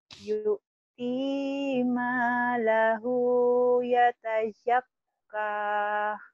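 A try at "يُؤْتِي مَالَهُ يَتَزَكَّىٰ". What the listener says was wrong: Jangan kah, kak. Jangan dahannya ya. Yu'ti yu'ti ma lahu yatazakka.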